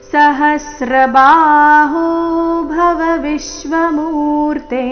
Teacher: ಹ ಮೇಲೆ ಆಘಾತ ಬಾಹು ಎರಡು ದೀರ್ಘ ಸಹಸ್ರ ಬಾಹು ಭವ ವಿಶ್ವಮೂರ್ತೆ [ಸಂಗೀತ] ವಿಶ್ವ ವಿ ಮೇಲೆ ಆಘಾತ ಮೂರ್ತೆ ಎರಡು ಅಕ್ಷರ ದೀರ್ಘ